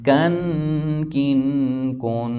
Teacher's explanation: کاف اور قاف میں فرق کر کے پڑھنا ہے، کاف یہاں باریک ہے